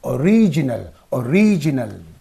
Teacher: O is lightly stressed, lightly pronounced.